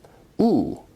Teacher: is a high back rounded vowel